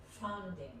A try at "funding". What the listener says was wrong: Yeah, you say it a lot like founding. It sounds a bit like when you said it like 2-3 times, I wrote it down because it sounded a bit like founding.